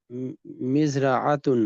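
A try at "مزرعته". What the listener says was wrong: मजरातुहु, मजरातुहु, आखिर में हु है और ये उसका खेत है।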